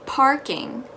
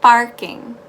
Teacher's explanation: Remember, it's parking. Very soft, very airy, instead of barking.